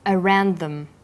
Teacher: The final d sound in around is similar in pronunciation to the first sound in the word them.